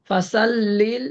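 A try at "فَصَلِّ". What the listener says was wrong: এই যে ফাসল্লি হবে না, ফসল্লি, মুখে গোল করে ফসল্লি। সিন সিন জবর সা আর সোয়াদ জবর স, বা জবর বা, র জবর র। অতএব এখানে স ফাসল্লি। তুমি যখন ফাসল্লি পড়বা তখন যে কোনো লোকে বুঝবে যে হ্যাঁ এটা সিন না সোয়াদ। ফাসল্লি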